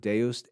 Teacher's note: beoo but in ecclesiastical Latin that D thong changes its pronunciation it's simplified into the sound a